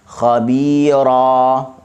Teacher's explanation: huruf ra dibaca dengan tebal kerana dia baris atas. Dan asal khabiran, tapi disebabkan kita berhenti, kita baca dengan iwad lah.